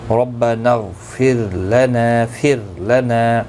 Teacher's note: غین مستعلیہ ہے، پر پڑھا جائے گا. را ساکن سے پہلے زیر ہے اس لیے باریک پڑھا جائے گا.